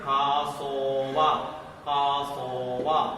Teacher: ഇത് open syllable ആയതുകൊണ്ട് long ആയിട്ട് ഉച്ചരിക്കണം